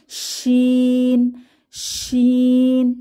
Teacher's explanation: শিন হরফটি উচ্চারণের সময় আওয়াজ মুখের ভেতরে ছড়িয়ে পড়ে, সা সা একটি আওয়াজ মুখের চারপাশে ছড়িয়ে পড়ে।